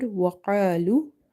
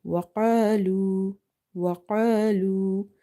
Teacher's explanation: qaf is heavy, alif is heavy because of this heavy kaf as well as madda. Lu, waw is madda.